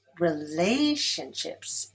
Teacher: Relationships is stressed on the second syllable.